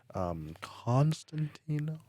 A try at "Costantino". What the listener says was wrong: No N.